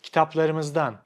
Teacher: This suffix system makes Turkish much more difficult to understand because there are no pauses between the suffixes. It all sounds like one word, which is very long and you hear it very fast.